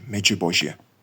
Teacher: у літописах він фігурує як меджбожє з м'яким Дж і ж